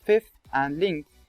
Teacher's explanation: the tongue-tip is placed in position for /θ/ during the previous consonant, so that there is no gap between them